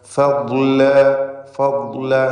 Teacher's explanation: ദ്വാദ് ഇസ്തിഅലാഇൻ്റെ അക്ഷരമാണ്, തഫ്ഖീം ചെയ്യേണ്ട അക്ഷരമാണ്